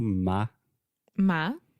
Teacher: the first sound is ma with a very open a